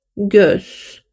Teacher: göz dediğinizde ne yapıyoruz dudaklarımızı Aslında o şeklinde büzmüş oluyoruz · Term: ö harfimiz